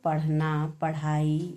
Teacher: इन वर्णों का दष्ट पृष्ठ या ताड़न जात व्यंजन भी कहते हैं। इनका उच्चारण करते समय हमारी जीभ हमारे तालु को छूते हुए झटके के साथ नीचे की तरफ आती है। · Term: उत्क्षिप्त व्यंजन, उच्छिप्त व्यंजन